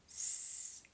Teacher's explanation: finishes in a s sound which is unvoiced